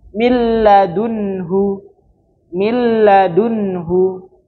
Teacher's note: Nah, dia kan ee ada nun sukunnya. Terus ada nun sukun bertemu dengan lam. Nah, maka dia langsung masuk ke huruf lamnya.